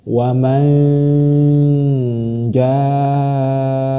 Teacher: tidak jelas ketika nun mati masuk ke huruf Jim waman Jaa tidak jelas disamarkan dan berdengung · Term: ikhfa